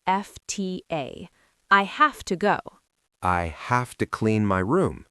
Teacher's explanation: A V becomes an F? So have to becomes have to? Yes, HAFTA.